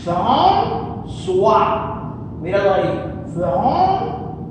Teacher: pierde el sonido de K y se convierte en S. François, míralo ahí, François, Era la A, la S y la UA. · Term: cedille